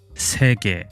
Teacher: E is a close mid front unrounded vowel, which can be found in a Korean word like 세계, meaning world.